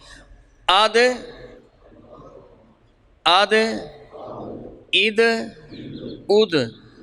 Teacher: دال حروف قلقلہ میں سے ہے, بڑی نرمی کے ساتھ. آد عید اد دا دی.